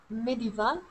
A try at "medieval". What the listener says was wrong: Yeah, medieval. You said medieval. You need to say medieval. Different stress.